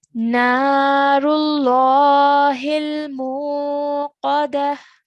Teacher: the mu sound, meme with a dhamma, needs to be stretched for 2 counts